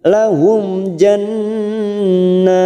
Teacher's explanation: Rabbahum lahum, mim sukun bertemu jim idhar safawi dibaca jelas tanpa mendengung